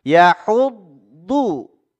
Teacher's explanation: huruf dhad ini makhrajnya ada di pinggir lidah yang menempel dengan gigi geraham kita yang atas. Dari mulai geraham belakang sampai gigi taring.